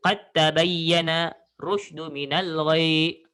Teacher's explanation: cara nak sebut buang huruf dal, sambungkan qaf dengan ta berserta tasydidkan huruf ta itu